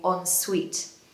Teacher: Now, the stress is on the second syllable, so make sure you say ensuite.